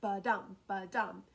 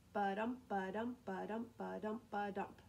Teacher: It's iambic pentameter is a set of two syllables, one unstressed and one stressed